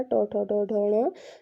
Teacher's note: ट वर्ग का ट, ठ, ड, ढ, ण, इसका उच्चारण स्थान मूर्धा होता है